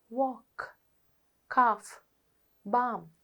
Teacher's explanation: In all 4 words you have the L sound highlighted, but in one word you hear the L sound, bulk, and in the other words you don't hear the L sound. L is silent.